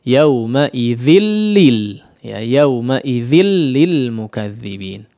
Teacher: Tanwin yang bertemu dengan huruf lam maka diidghamkan. Nunnya hilang. Ya, nunnya hilang langsung masuk kepada huruf lam.